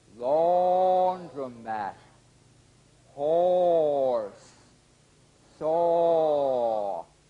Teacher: the midway lip opening produces the vowel sound or as in fall